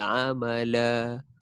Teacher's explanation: Tapi kita berhenti kat amala tu jadi mat iwat 2 harakat.